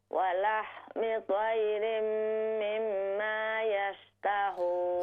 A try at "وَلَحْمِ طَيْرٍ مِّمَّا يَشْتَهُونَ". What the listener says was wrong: ہاں جی پہلا غنہ آپ نے پورا کیا ہے, دوسرا نہیں.